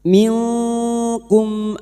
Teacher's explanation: Kita samarkan bunyi nun sukun dan mendengung selama tiga harakat. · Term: ikfa hakiki